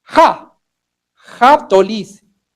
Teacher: Tenemos la secuencia de signos A, Po, To, Lice, que realmente lo que le ha faltado es esta aspirada glotal H, Ja, Japtolis, la ciudad.